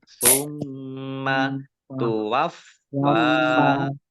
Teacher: Summa tuwaffa, fa-nya dibaca double, ada tasdidnya. Ya, tuwaffa ada tekanan ya biar tampak doublenya. Fa fathah berdiri mat tabi'i.